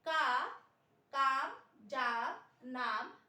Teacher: हमने एक लिमिट ले ली, एक हमने पाई का मात्रा ले ली कि यदि उच्चारण करें तो ह्रस्व स्वर को उच्चारित करने में 1 पाई का समय लगता है, जबकि दीर्घ स्वर को उच्चारित करने में 2 पाई का समय लगता है, अर्थात दुगना। ह्रस्व से दुगनी ध्वनि आप दीर्घ मात्रा में देते हैं